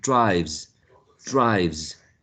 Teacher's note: Um, and as you can imagine, the same situation happens, but this time with voicing, because drive v is voiced, therefore we used a voiced z. So drive becomes drives, drives.